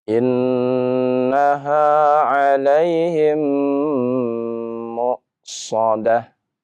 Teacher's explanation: Dibaca dengan suara gunnah dengan 2 harokat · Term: idgham syafawi